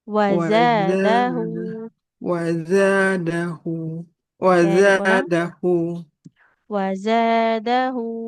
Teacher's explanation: Mirip Z ujung lidahnya. Tempelkan ke ujung gigi bawah. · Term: huruf zai